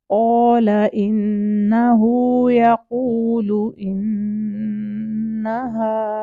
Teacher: एक इन्नहु और दूसरा इन्नहा दोनों पे सेम टू हरकत का होल्ड करेंगे। वो इन्नहु हु की टू हरकत है, इन्नहा हा की भी टू हरकत है।